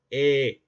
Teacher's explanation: los labios no se redondean cuando pronunciamos la e, ¿verdad? Entonces, si no se redondean, quiere decir que es no lavializado.